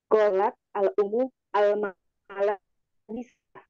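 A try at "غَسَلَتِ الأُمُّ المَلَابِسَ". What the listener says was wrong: Iya, baik.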